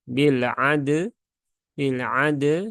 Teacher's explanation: yang pertama qolqolahkan Dulu huruf dalnya